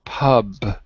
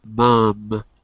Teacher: can you hear the difference between Pub through your mouth mom through your nose